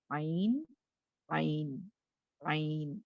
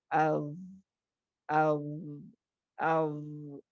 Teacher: you will not hear any whispering sound, you will not hear any breathing sound in that. Breathing sound cut ہو جاتی ہے اور you can just hear the sound of the letter.